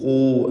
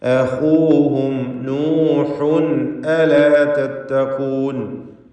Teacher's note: ലഹും അഖൂഹും, ഖാഇന് നിസ്ബിയായ തഫ്ഖീം കൊടുക്കണം. മൂന്നാമത്തെ ലെവലിലുള്ള തഫ്ഖീമാണ്. ഖാഇന് ളമ്മാണ്.